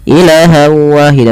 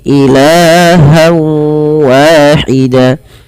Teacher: Pada lafal ilah di sini kita panjangkan la-nya sepanjang 2 harokat karena ia ada mad tabi'i. Fathah bertemu dengan alif, jangan dipendekkan ya teman-teman.